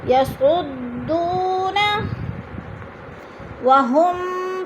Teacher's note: یسعدون، وہم پہ ادغام شفی، میم ساکن کے بعد میم مشدد آ رہا ہے تو ادھر ادغام شفی۔ مستکبرو پہ وہ مدہ ہو رہا ہے۔